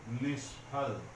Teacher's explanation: आगे क ख प फ रहे तो वहां पर ये दंत स जो है वो मूर्धन्य स में बदल जाता है। तो यहाँ पर हम ऐसे न लिख करके ऐसे लिखेंगे, निष्फल।